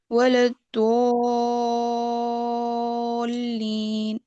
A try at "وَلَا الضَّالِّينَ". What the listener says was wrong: جی یہ پہلے سے بہتر ہے. ٹھیک. لیکن ابھی بھی when you will look into the mirror آپ دیکھیں گے ہوٹوں کے ساتھ کچھ نہیں کرنا اس حرف میں.